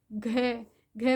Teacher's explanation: घ में थोड़ा सी श्वास की आपको ज्यादा आवश्यकता है तो घ ये महाप्राण में तो जिनमें श्वास की आपको थोड़ी